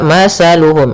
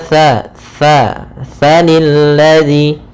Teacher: Pada bacaan mathaluhum, di sini ada huruf tha. As-tha makhrajnya yaitu dari ujung lidah kita, ujung lidah menempel dengan gigi seri atas. Sehingga ketika pelafalan tha, jangan sampai kita melafalkannya dengan masaluhum dengan huruf sin.